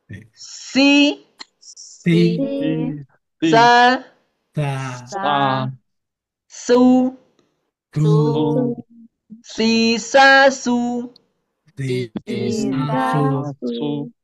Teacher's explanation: Kalau sin agak lebih tipis, agak lebih lembut juga